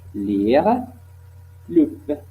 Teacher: Aussi, nous avons alvéolaire latéral, la pointe de la langue, comme près les alvéoles, la passer sur les côtes de la langue, comme les sons L, constrictive, latérale, apico-alvéolaire, sonore